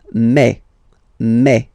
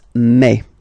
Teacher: when you combine this A and then I vowels, you get the sound E, eh. So really open eh